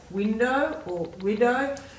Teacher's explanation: you can sense that there's no air after the w in either of them